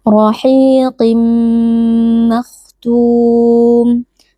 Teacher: Q dia tetap dibaca dengan tafkhim atau dengan tebal hanya saja tingkat ketebalannya itu berkurang dibandingkan ketika ee kondisinya itu fathah atau damah Jadi jangan sampai huruf qaf kasrah ini berubah menjadi huruf Kaf